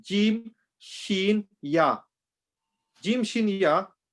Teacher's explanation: They come from the middle part of your tongue when it touches the middle part of your palate.